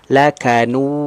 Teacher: Artinya kalau huruf itu keluar dari makhraj al-jawf, rongga tenggorokan dan rongga mulut terbuka, berarti tidak boleh masuk ke al-khayshum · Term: mat tabi'i